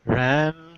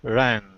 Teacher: Notice how the sound is a little different when you put that NG. It's not such a pure vowel sound anymore.